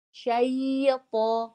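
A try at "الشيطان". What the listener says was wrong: Jangan baca atau jangan naikkan pangkal lidah dulu sebelum baca i selesai. Ini kan ibu i belum selesai.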